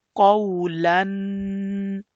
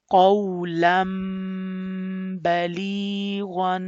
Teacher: And when the letter after noon sakin and tanween is ba from iqlab letters, so you will change the sound of noon sakin and tanween into meme, and you will stretch the nasal sound for 2 seconds